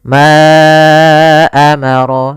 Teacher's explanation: Di sini ada mad jaiz munfasil, yaitu mad yang terjadi apabila ada huruf hamzah datang setelah huruf mad. Maka di sini panjang untuk ma adalah 4 harokat atau 5 harokat.